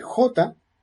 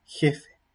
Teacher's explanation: no es la misma articulación cuando uno dice J, que es más atrás en el velo, que cuando uno dice jefe